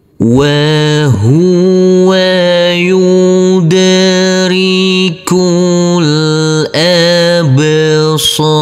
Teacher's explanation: Huruf dal di sini kita pantulkan karena ini adalah bacaan qalqalah. Huruf kaf langsung masuk ke huruf lam yang bersukun. · Huruf kaf langsung masuk ke huruf lam yang bersukun. Huruf alifnya kita anggap tidak ada.